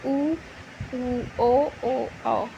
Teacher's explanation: जिन स्वरों के उच्चारण में होठ गोलाकार होते हैं वृत्तमुखी कहलाते हैं